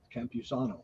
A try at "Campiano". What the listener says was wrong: There's no S. Campiano.